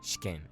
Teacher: When you have an i or an u between 2 consonants that don't use the vocal cords, such as sh or k, the i or the u gets almost deleted. This is why despite the kana for this word being read as shi, ke, n, the pronunciation is actually shiken. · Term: museika